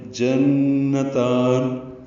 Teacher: نون مشدد پہ غنہ ہے، جن آواز ناک کے واسطے میں لے جا کر دو حرکات تک ٹھہرائیں گے، تا کو لمبا کریں گے اور نون ساکن پہ وقفاً اظہار ہوگا۔